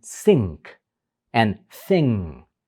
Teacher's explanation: the end that you're producing is not a regular alveolar n but it's actually a velar end that's preparing for the velar sound that's happening next and in · in the word thing you're actually not pronouncing the G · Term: velar N